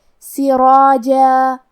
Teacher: ہم جیم کو اور اس کے بعد مد الف کو دونوں کو ہلکی آواز میں پڑھیں گے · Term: حروف ترقیق